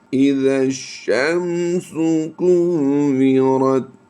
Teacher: را کی ادائیگی پر کرتے ہوئے ہم نے تا کے ساتھ آگے ملانا ہے